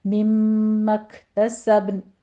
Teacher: نون کو آپ نے اگر اب سٹاپ کرنا ہے تو پھر با کے قلقلہ کے بعد نون کی ساؤنڈ ہلکی سی لے کر آئیں گے کہ نون میں قلقلہ پیدا نہ ہو